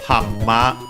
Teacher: N, when followed by the M, becomes also M by assimilation, and so double M. Hamma. We check the accent, but I think it's on the same, just like in English, yes, on the hammer, hammer, hammer.